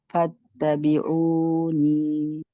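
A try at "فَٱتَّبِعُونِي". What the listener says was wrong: আপনার উটা একটু বড় হচ্ছে, বুঝছেন, টু এর চেয়ে বেশি হচ্ছে।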